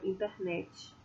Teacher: além da vogal, a gente tem também a ocorrência da palatalização. Então, fica internet.